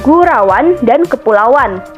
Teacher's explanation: dua fonem guna memperlancar bacaan misalnya pada kata gurauan dan kepulauan pada saat mengucapkan kata tersebut muncul bunyi w dalam pengucapannya